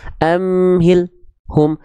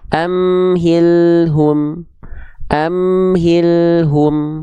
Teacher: Ya, maka jangan sampai terputus. Amhilhum, alnya terus ngalir sedikit, nggak ada jeda.